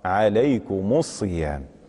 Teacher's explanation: أي ميم الجمع تضم بدون صلة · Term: الضم بدون صلة